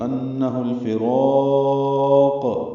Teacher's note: یہاں پہ دو حرکات ویسے لمبا کریں گے لیکن قاف پہ رکنا ہے تو مد عارض للسکون بنے گی، تو انہ الفراق اب لمبا کر سکتے ہیں اور قاف پہ قلقلہ کریں گے. ملانے کی صورت میں انہ الفراق، یعنی را کو دو حرکات ہی لمبا کرنا ہے اور قاف کی پیش کو معروف طریقے سے پڑھنا ہے.